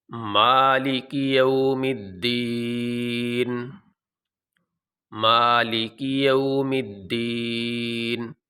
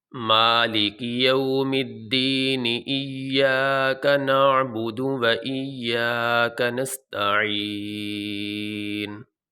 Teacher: اب نون کے نیچے جو زیر ہے، ہم یہاں وقف کرتے ہوئے اس نون کے نیچے جو زیر ہے اس کو نہیں پڑھیں گے، نون کو ساکن پڑھیں گے۔ · اگر ہم دونوں ایتوں کو ایک سانس میں پڑھنا چاہتے ہیں تو پھر یہ نون کے نیچے جو زیر ہے یہ پڑھی جائے گی